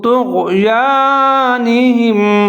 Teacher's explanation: توئی کو موٹا پڑھنا ہے، آگے غین کے اوپر ساکن ہے